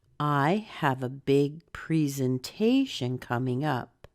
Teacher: on coming up stress up a little bit more than come because it's a phrasal verb